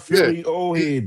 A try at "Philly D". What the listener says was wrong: No, you said Philly Ohead.